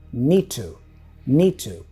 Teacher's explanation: Notice the D for need is dropped.